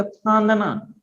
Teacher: आप अगर बोलेंगे फांदना तो नाक और मुंह दोनों से हवा निकलती है, इसीलिए उसको हम कहते हैं अनुनासिक का प्रयोग करते हैं।